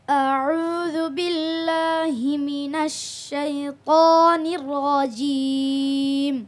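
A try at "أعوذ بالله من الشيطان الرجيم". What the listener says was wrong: নির খুব দ্রুত হয়ে গেছে, এমনি সুন্দর হয়েছে। নির রাজিম, নির্রাজিম।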